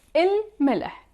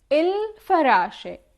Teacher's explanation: we pronounce the whole L or il in the Levantine dialect, and we don't double the first letter of the word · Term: moon letters